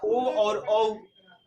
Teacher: ओ और औ, इसका उच्चारण स्थान जो है वह कंठ ओष्ठ है